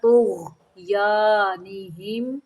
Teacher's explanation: غین کو قلقلہ نہیں کرنا، نہیں پڑھنا